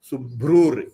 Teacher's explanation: The Visarga will change to Ir sound. Subhrur, so that Ir again is important because That ir is actually the visarga.